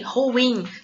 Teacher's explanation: Aí sim a sílaba tônica é no i, ruim.